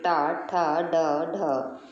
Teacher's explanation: टवर के जितने भी अक्षर होते हैं अगर हम उनको बोल के देखें तो हमारी जीभ अंदर को मुड़ जाती है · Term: मूर्धा